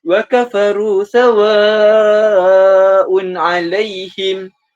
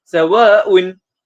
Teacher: Pembaca hanya menjalankan 2 harakat sedangkan sepatutnya bacaannya adalah 4 hingga 5 harakat. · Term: mad wajib mutasil